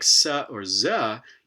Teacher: is you know sort of up here near the top teeth there's a very tight constriction at the alveolar ridge it's not probably quite blocking airflow but it's making it flow through a very narrow cavity probably hitting these top teeth and making lots of strident noise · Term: anterior fricative